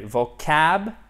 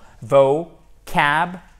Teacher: Il faut vraiment ouvrir la bouche pour faire celui-ci et vous avez l'accent tonique sur la deuxième syllabe